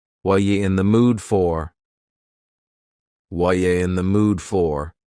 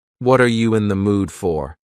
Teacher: The word are is gone and the word you has been reduced to yah. So when we link together, what and you super fast. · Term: reduction